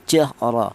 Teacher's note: Kemudian di sini ada jro, di sini ada huruf ro di mana huruf ro ini berharakat fathah yaitu dibaca tafhim atau dibaca tebal